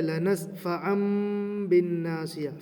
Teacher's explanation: دو زبر کے بعد با آیا ہے، لہٰذا یہاں پر بھی دو زبر کو میم کی آواز میں بدل کر پڑھیں گے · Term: اقلاب